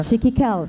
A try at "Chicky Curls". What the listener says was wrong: Chicky Curls. Chicky Curls. Pag gumagon pa yung nguso mo pag sinasabi ng Chicky Curls. Chicky Kels.